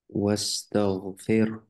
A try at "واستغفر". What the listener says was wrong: ফির, বাতাস বের হতে হবে, ফির, না, ফিরে থেমে যাচ্ছে এরকম মনে হচ্ছে, হ্যাঁ। বাতাস বের হতে হবে, ফির। বাতাসটা বের করতে হবে কমপ্লিটলি, ওকে।